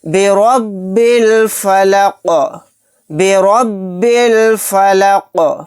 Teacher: با کو ڈائریکٹ لام کے ساتھ ملا دیں گے، یہ الف نہیں پڑھا جائے گا